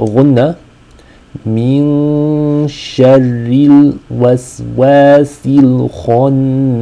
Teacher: The rule is ikhfa, What we want to do is hold the noon, hold the nasal sound on the noon for two counts